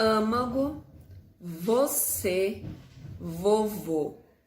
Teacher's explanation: suas pronúncias são mais fechadas